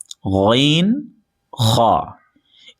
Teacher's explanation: غین خا، اس کو غین نہیں بولنا ہے اور نہ ہی کھا بولنا، بلکہ غین خا، آواز کے اندر بھاری پن لائیں گے اور آواز کو موٹا کریں گے۔ حلق کے اوپر والے حصے سے ادا ہوتے ہیں۔